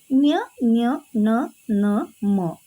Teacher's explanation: ಅನುನಾಸಿಕ ಅಂತಂದ್ರೆ ಮೂಗಿನ ಸಹಾಯದಿಂದ ಮೂಗಿನ ಮುಖಾಂತರನೆ ಹೇಳುವಂತದ್ದು